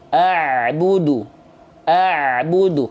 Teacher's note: Ain keluar dari yang namanya wastul halqi wastul halqi itu artinya adalah tengah tenggorokan tengah-tenggorokan kita dikuatkan ditekan seperti ini Nah lihat ya ain keluar